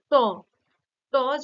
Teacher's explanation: জীভের আগাটা বা অগ্রভাগটা একটু সামান্য উল্টে মূর্ধায় গিয়ে ঠেকছে তাই না ট দন্তমূলের পেছনে বা দন্তমূলের পরের অংশটাই হলো মূর্ধা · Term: মূর্ধন্য ধ্বনি